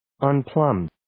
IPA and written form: ən'pləmd (Unplumbed)